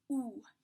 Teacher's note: It is the roundest, most pure oo that you can make.